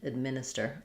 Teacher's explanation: in administers, we stress on the min syllable. And so, we're going to have a really reduced sound here for the rather than an ad like an admin, we're going to have administer.